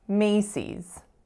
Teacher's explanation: The strongest syllable is the first.